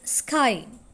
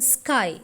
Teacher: K as in sky is unaspirated. അതായത് അതിന് forceful expulsion of air ഇല്ല.